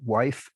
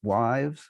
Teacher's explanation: So wife has a plural wives, where the F of the singular is realized as a V in the plural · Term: voicing